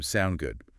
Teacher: the short form sound good again with that upward inflection